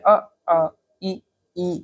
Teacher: जैसे अ ई, ठीक इस तरीके से, तो बोलते समय कम मात्रा में वायु निकल रही है, अल्प प्राण